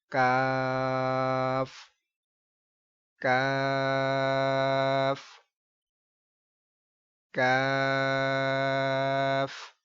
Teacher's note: اب یہ کاف اس کو باریک پڑھنا ہے، اس کو موٹا نہیں پڑھنا.